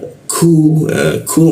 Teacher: huruf ku di siku tenggorokan lidahnya kita turunkan sehingga membaca ku itu ada hembusannya dia